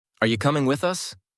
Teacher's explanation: Hear how you becomes ya, and the melody stays similar but faster. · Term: reduction